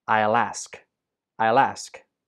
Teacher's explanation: the l sound at the end of will links to ask and ask gets stressed so altogether it sounds like this i'll · In this sentence, I will gets contracted to become I'll. The L sound at the end of will links to ask, and ask gets stressed.